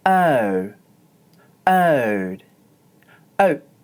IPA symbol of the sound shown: əʊ